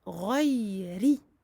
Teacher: le ra ici, comme je disais, est aminci car il porte une kasra